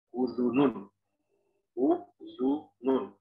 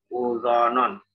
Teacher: Udhunun, udhunun. Semuanya dhammah, semuanya memucucuk atau monyok.